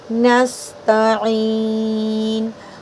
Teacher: आइन की आवाज़ हलक से और खींचते हुए रुकना है · जब नून को सीन में मिला रहे हैं तो हम्स करेंगे और सीटी का ध्यान रखेंगे, बिना सीटी के पढ़ेंगे तो फिर मीनिंग बदलेंगे।